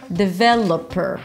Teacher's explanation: Primary stress on the second syllable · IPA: də-ˈvɛ-lə-pər